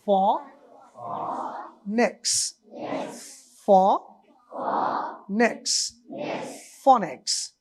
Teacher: নিচের ঠোঁট উপরের দাঁতের সাথে মিলিয়ে আমরা ফা বলি, যেমন আরবিতে ফা, ওরকম অবস্থায় থাকো মুখের, বলো ফ নেক্স, ফ নেক্স, phonics.